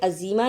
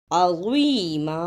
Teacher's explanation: اب پڑھیں اثما عظیما، اسے عظیمہ نہیں کہنا، عین کی آواز آ ہے اور زوا کی آواز زا نہیں زوا ہے۔